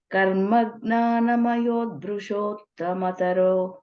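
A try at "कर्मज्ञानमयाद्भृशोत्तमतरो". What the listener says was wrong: Mayat. You're saying mayot. Karma jnana mayat.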